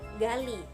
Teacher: Yang keenam bunyi G. Ciri-cirinya hidup, oral, velar, plosif.